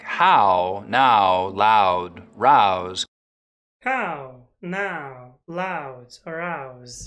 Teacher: Canadians still use that wide ow diphthong.